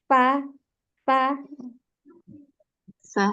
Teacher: bibir bawah bagian dalam menempel pada dua gigi seri atas itu terdapat huruf Fa nah kunci di huruf Fa ini di